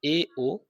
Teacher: विवृत स्वरों से थोड़ा थोड़ा कम मुख खोले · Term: अर्ध विवृत